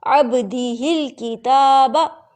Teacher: اب نے اس کو کتابا نہیں کرنا، یعنی تا کو لمبا، تا تو لمبا ہوگا، تا پہ کھڑی زبر ہے، تا کو لمبا کرنے کے چکر میں آپ نے با کو لمبا نہیں کرنا